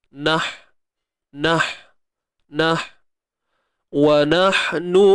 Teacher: Kita tak meletakkan huruf ha itu betul-betul pada makhraj dia. Huruf ha ni dia pada kerongkong, tengah kerongkong. Kalau ha biasa di pangkal, di bawah sekali pangkal.